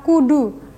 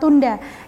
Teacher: bunyi K dalam kata kudu dan bunyi T dalam kata tunda yang diucapkan tanpa melibatkan rongga hidung. Karena saluran udara dari paru-paru melewati rongga tersebut menutup dengan mengangkat velum atau anak teka tersebut.